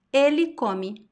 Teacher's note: past tense the stress is at the end so the last I sound is very strong